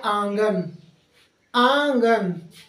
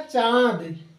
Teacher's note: जिसका उच्चारण मुख से और नाक से, दोनों से हो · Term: अनुनासिक